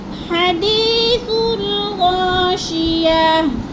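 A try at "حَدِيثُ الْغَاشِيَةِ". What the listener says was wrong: गैन को मोटा करो। हल अताका हदीसुल गाशिया।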